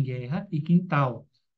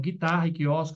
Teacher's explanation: o U não é pronunciado, quando seguido de E ou I, como em guerra e quintal.